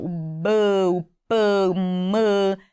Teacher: sons que a gente diz ser bilabiais que é o movimento dos dois lábios para sair o som